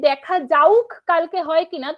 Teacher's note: এটাকে যখন বলছি দেখা যাউক কালকে হয় কিনা, তখন আমরা দেখছি যা এবং কয়ের মাঝখানে একটা উ ধ্বনি এসে যুক্ত হচ্ছে। এই উ ধ্বনি বা ই ধ্বনি এসে যুক্ত হওয়ার প্রক্রিয়াকে বলা হয় হচ্ছে যে অপিনিহিতি।